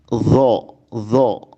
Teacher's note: Kalau dha ujung lidah mengenai ujung dua gigi seri atas. Dho, ya. Jangan tertukar atau jangan juga jadi zo, ya, zo jadi zai, itu tidak, ya.